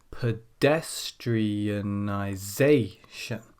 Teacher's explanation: we have two syllables stressed and that's number two and number six